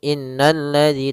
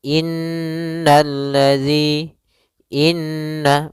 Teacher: bacaan Inna di sini ada huruf nun yang berharakat tasydid maka cara membacanyaitu kita menahan suara nunnya suara Nun kita tahan-tahan dulu baru dibaca jangan langsung innalladzi tapi tahan dulu dua ketukan innalladzi Inna maka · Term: gunah